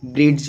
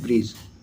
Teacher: इसमें डी जो है ना वो साइलेंट होते हैं।